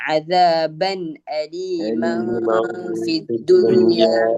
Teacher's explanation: അപ്പൊ അദാബൻ എന്നുള്ള ബായിന് വന്ന തൻവീനെ വ്യക്തമാക്കണം. അലീമൻ എന്നതിലെ മീമിന് വന്ന ഫതഹു തൻവീനെ അവ്യക്തമാക്കി ഫായിലേക്ക് ഉച്ചരിക്കണം.